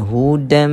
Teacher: memasukkan sebutan tanwin ini ke dalam mim maal ghunnah bersamanya kita kena dengungkan bacaan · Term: idgham maal ghunnah